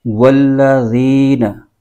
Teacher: के बाद वाला हर्फ जी जा उसके साथ नहीं बल्कि इसको ल को जाल के मखर के साथ यानी जबान का सिरा ऊपर के दांतों के अंदरूनी किनारे से इसको हमने पढ़ना है वल्लन बिल्कुल नरमी के साथ इस हर्फ को पढ़ना है वल्लन · کے بعد والا حرف زی، زا اس کے ساتھ نہیں بلکہ اس کو ذال کے مخرج کے ساتھ، یعنی زبان کا سرا اوپر کے دانتوں کے اندرونی کنارے سے اس کو ہم نے پڑھنا ہے ، والذین، بالکل نرمی کے ساتھ اس حرف کو پڑھنا ہے،